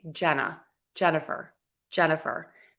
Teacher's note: So when we have longer words, you're more likely to have a schwa sound that's short, quick, super quick, super relaxed, super short